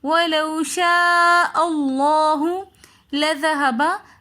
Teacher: ذال نرمی والے حروفوں میں سے آ رہا ہے تو ہم نے کوشش کرنی ہے کہ ذال کے اندر کسی قسم کی سختی یا سیٹی نہ ہو